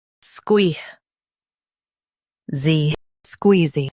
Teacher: Emphasize squee and keep z quick.